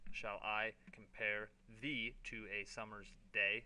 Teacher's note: every other syllable is stressed so that each line ends with a strong Rhythm